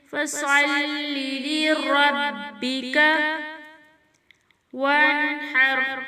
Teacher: صاد حرف مستعلیٰ میں سے ہے، صاد کو موٹا پڑھیں گے